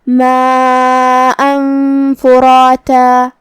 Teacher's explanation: ہم یہ تنوین کو چھپاتے ہوئے لیکن غنہ کے ساتھ یہ حکم کو ادا کریں گے · کلمت فراتا میں یہاں را پہ زبر ہے، لہذا ہم حرف الرا کو اور جو کہ اس کے بعد مد الف ہے، تو یہ دونوں حرف کو تفخیم سے مطلب بھاری آواز میں ادا کریں گے. آخری میں ہم یہ کلمہ پہ رکیں گے تو اس پہ مد الف سے رکیں گے. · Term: اخفاء